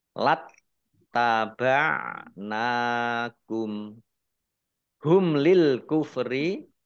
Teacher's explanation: mim sukun bertemu dengan huruf lam bacaan izhar syafawi dibaca jelas Lil kufri ini harusnya ada alifnya alif lam qamariah ditandai lamnya